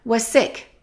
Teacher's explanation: Let's connect was and sick because there's only one S. When we have two, it becomes one.